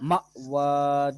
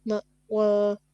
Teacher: جھٹکا دیں حمزہ ساکن ہے